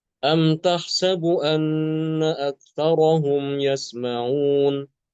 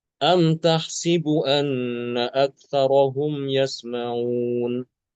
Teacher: Imam alkis membaca dengan mengkasrkan huruf sin. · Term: mengkasrohkan huruf sin